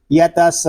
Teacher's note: اس میں جو قاعدے لگ رہے ہیں وقف میں وہ ہے مد عارض اور وقف تام. یہاں مد عارض اس لیے ہو رہا ہے کہ واو مدہ کے بعد عارضی سکون آ گیا ہے